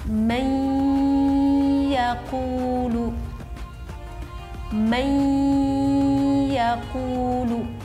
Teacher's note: Mendengungkannya itu sekitar 2 ketukan ataupun 2 harakat. Contoh, may yaqulu, may yaqulu, tampak terdengar ada dengungnya. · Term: idgham bi ghunnah